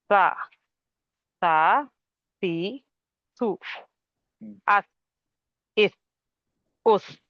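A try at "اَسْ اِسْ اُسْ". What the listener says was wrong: नहीं, ये तो सीधा हो गया ना, अस इस उस, कट गई आवाज। इसमें हम्स कहाँ हुआ? हम्स नहीं, अस इस उस। हाँ, हम्स होना चाहिए ना, हम्स मतलब सांस जारी रहना चाहिए ना, सांस जारी रहेगी ना। और ज्यादा अस, मेरी आवाज सुनिए, मैं मैक्सिमम कर रहा हूँ मैं। अस अस अस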